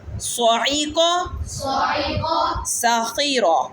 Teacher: صاد موٹی ہوتی ہے اور سین باریک پڑھا جاتا ہے سیٹی کے ساتھ